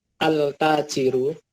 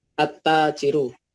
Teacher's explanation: alif lam yang dibaca idgham atau melebur artinya lam sukunnya tidak terbaca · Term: alif lam syamsiah